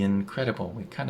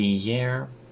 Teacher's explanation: we kind of added yeah between the and incredible